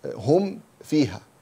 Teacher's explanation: We pronounce the ميم first and the فاء in the second. And its sound is apparent because it's إظهار.